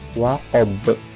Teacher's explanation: Karena ba ini termasuk huruf qalqalah, jadi membacanya mantul